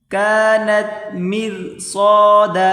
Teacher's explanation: را کو باریک کر کے پڑھیں صاد الف زبر صاد کو موٹا کریں گے